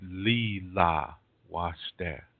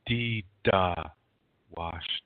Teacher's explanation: Where we have an L, Dakota people use a D.